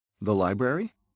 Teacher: when we want to confirm information we can make the rising intonation